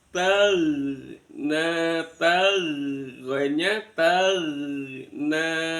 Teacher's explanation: Ini ada alif bengkong atau alif lain. Nanya wajib dibaca panjang sepanjang mad tabi'i. · sinnya sin tipis ya. S giginya ditempelkan, angin disangin, disaring dengan dua gigi.